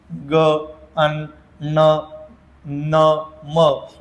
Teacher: हे जे शेवटचे 5 आहे ना, ग, अन, न, न, म, यांना म्हणतात अनुनासिके. ज्यांचा उच्चार नाकातून होतो त्यांना काय म्हणतात? अनुनासिके